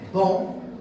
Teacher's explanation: So the nasal is deleted, but its feature is not deleted. Its feature, which is nasality, it goes to the vowel, and the vowel becomes nasalized. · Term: nasalized vowels